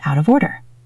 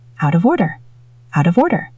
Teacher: Out ends in T. Of starts with a vowel. That is a flap T. Out of. Of ends in an F or V sound.